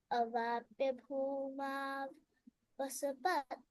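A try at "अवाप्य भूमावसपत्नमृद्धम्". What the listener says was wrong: Bhumav and then again vasa. It cannot happen like that. Avapya bhumavasa.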